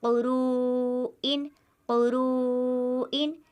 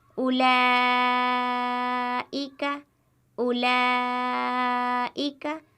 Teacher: حرف مدہ ہو اس کے بعد حمزہ ہو تو وہاں پر مد متصل ہوتا ہے اور 4 الف کے برابر وہ حرف کھینچ کر پڑھا جاتا ہے